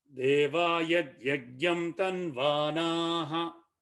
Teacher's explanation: Va na both are long. Tanvanaha, and then there is a visarga at the end. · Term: hrasva dirgha